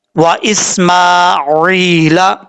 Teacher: عین کے بعد یا مدہ ہے، ایک الف کی مقدار اس کو لمبا کر کے پڑھیں گے